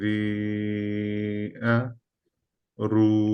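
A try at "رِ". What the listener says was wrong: এটা আরেকটু smiley face, হ্যাঁ, রি, রি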